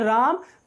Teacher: पुकारने में। सपोज जैसे हम किसी को बुलाते हैं कि राम, तो जब राम दूर खड़ा हुआ है और उसको हम पुकारते हैं राम, तो वो राम थोड़ा सा खिंच जाता है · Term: प्लुत स्वर